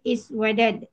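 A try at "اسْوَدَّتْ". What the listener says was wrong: iswaddat. Ya, tasdid.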